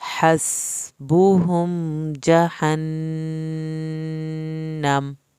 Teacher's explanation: نون کی شد پہ دیر لگانی ہے